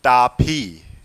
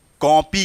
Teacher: ओ और आ के बीच में जो ध्वनि निकले वो हम उसका उच्चारण करेंगे